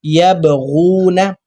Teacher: با پر جو سا قلقلہ کرنا ہے، با پر جزم ہے